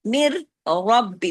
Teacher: دوسرے را میں را ہیوی ہو گیا زبر کے ساتھ · پہلا مر را باریک ہے زیر کے ساتھ پڑھا